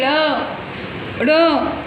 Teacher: ड़ आप अपनी जीभ को ऊँचे करके बोलते हैं ना, तो उसे कहते हैं तालु से बोलना।